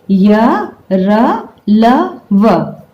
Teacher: इन व्यंजनों के उच्चारण में अन्य व्यंजनों की तुलना में कम रुकावट से वायु निकलती है। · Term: अंतस्थ व्यंजन